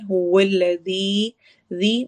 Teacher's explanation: هو الذی و میں ہونٹ گول ہوتے ہیں، هو الذی، ذی میں دال کو نرمی کے ساتھ ہم نے پڑھنا ہے، زی کی آواز نہیں آئے گی، سیٹی والی آواز نہیں ہوگی، ذی والی آواز ہوگی۔